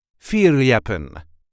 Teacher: There is a light emphasis on the first syllable.